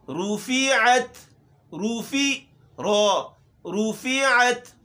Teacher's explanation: اچھا را زیادہ موٹی نہ ہو، را موٹے حروف میں سے وہ حرف ہے کہ جو کم موٹا ہوتا ہے. رُفِعَتْ، روفی رو، رُفِعَتْ ہونٹ گول ہوں گی، رُفِعَتْ.